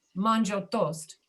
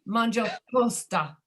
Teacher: They put an A at the end of the English word that they're bringing into their language to make it conform to the rules of their language.